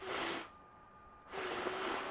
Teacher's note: with the F again, you have no vibration and no sound coming from your vocal cords.